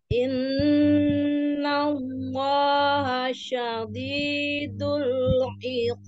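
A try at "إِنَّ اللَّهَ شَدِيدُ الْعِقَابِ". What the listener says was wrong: Syadidu, bukan syadidu. D-nya tipiskan. Innallaha syadidul iqab. Huruf ainnya terus dilatih. Iqab.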